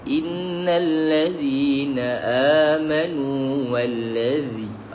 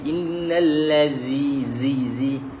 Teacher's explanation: innal ladzi ada sedikit keluar untuk sempurnakan, untuk bezakan dengan huruf zain